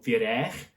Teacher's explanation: the neck part, I just have to remember, isn't actually a k sound, it's a ch sound. So firech, which means chicken.